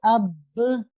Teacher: باقاعدہ اس میں 2 حرف کا آپ کو وقت لگانا ہوگا اور مضبوطی جماؤ تشدید کی وجہ سے اس میں برقرار رکھنی ہوگی، تو ایسا قلقلہ قلقلہ اکبر کہلاتا ہے.